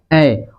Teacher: ऐ जो है अ जोड़ दीर्घी से बना है, और ये इस दोनों का जो उच्चारण स्थान है यही है, कंठ पहला का, दूसरा का तालु। यानी कि कंठ और तालु दोनों चीज से बोला जाएगा ऐ